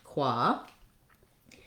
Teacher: ah, an open back vowel, qua. And then we have our N sound.